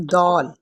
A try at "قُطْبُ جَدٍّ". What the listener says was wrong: قاف اور طا کو آپ نے باریک کر دیا اور دال کو آپ نے موٹا کر دیا.